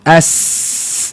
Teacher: Yang berdesir 3 huruf. Huruf zai, sin, sad.